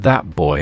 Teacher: the T anticipates the bilabial B